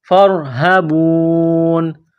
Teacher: جب یہاں وقف کریں گے سٹاپ کریں گے تو نون کو سائلنٹ کرنا ہے